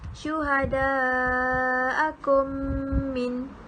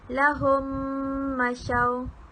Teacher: cara bacaan idgham mislain adalah mesti didengungkan dengan kadar 2 harkat